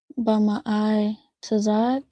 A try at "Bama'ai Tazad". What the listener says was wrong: All right, perfect.